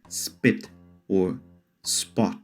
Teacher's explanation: the P isn't aspirated like in English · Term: not aspirated